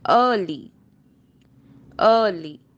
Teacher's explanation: it is open mid central unrounded vowel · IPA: /ɜː/